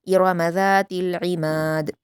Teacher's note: इरमा ज़ातिल, ज़ाल के मखरज को नरमी से अदा करना है। इमाद में आइन को हलक से अदा करेंगे और दाल पर क़लक़ला करेंगे